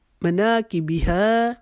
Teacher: مناکبہا, منا کو ایک الف کے جتنا لمبا کریں گے, کی کو نہیں کھینچیں گے. ہا کو ایک الف کے جتنا لمبا کریں گے